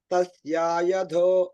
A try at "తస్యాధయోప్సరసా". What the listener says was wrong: తస్యా లేదండి తస్య అధయో తస్యాధయోప్సరసా